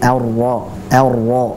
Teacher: cara membacanya adalah dengan mengangkat pangkal lidah atau lidah bagian belakang, itu diangkat. Itulah yang membuat huruf tersebut tebal.